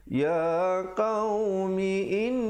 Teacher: wajib al-qunnah di situ didengungkan 2 harakat